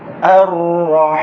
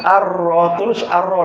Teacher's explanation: Ar-Ra, terus Ar-Ra, lamnya tak bunyi.